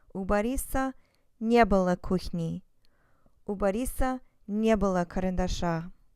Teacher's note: notice that the stress is always on the не